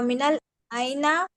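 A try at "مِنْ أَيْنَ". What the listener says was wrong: इसको मिनल ऐना नहीं पढ़ना, अच्छा। मिन ऐना है, अलिफ लाम तो है ही नहीं यहाँ पे।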